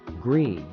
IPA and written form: ɡriːd (greed)